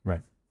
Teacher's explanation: here in Belgium we use the r with the tip of our tongue